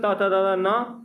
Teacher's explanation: त वर्ग जिसमें त न जिसे दंत से बोला जाता है